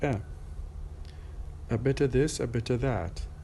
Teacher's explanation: I did not really pronounce the f sound.